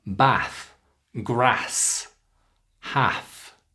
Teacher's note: In Northern England, they often use the short a.